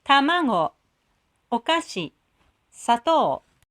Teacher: The patterns of low, high, low is called naka taka gata, which means middle high style.